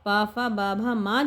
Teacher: प फ ब भ म, प फ ब भ म जो है, वो प वर्ग वाली जो ध्वनियाँ हैं वो सारी हमारी ओष्ठ ध्वनि के अंतर्गत आ जाएंगी